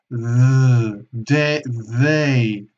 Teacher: insertamos la lengua entre los labios para ambos sonidos